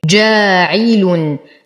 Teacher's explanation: ألف ساكنة ما قبلها مفتوح فهو مد طبيعي حركتين